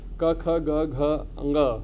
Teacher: And all these 5 sounds, they are produced from the same part of the tongue. The tongue touches your back